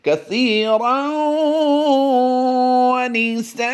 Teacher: دو زبر کی تنوین کو ہم نے وقف میں الف مدہ سے بدل دینا ہے